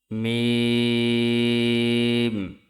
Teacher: দুই ঠোটে শুকনা জায়গা হইতে উচ্চারিত হয় মিম।